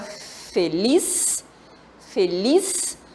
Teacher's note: a palavra feliz, feliz, a sílaba forte é lis